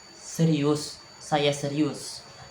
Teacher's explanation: Nada turun menunjukkan keyakinan atau ketegasan. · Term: nada rendah